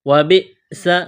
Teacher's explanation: حمزہ ساکن ہے تو حمزہ سے پہلے والے حرف کو حمزہ کے ساتھ ملائیں گے، جھٹکا دیں گے